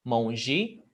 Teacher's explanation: Terminou em E, você pronuncia com I